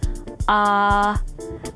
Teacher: see everything he needs clearly so to pronounce the sound ah put your tongue in the back part of your mouth the back part of your tongue is slightly raised and the lips are neutral remember that ah is a long sound